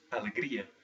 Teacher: For instance, joy, which is alegria, that has 4 syllables, but still the stress is on the second to the last or penultimate syllable